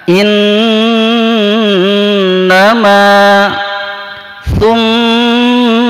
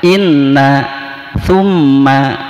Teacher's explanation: Berikutnya adalah mim syiddah dan nun syiddah, ya. Mim dan nun bertasydid maka itu harus didengungkan